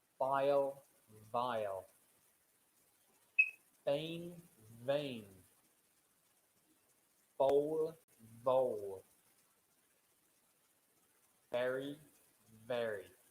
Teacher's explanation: This is a voiced sound. So for all of those words, you should be able to feel the vibration in your throat.